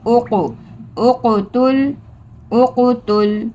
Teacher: قاف حروف قلقلہ میں سے ہے اس لیے ہم یہاں پہ قلقلہ کریں گے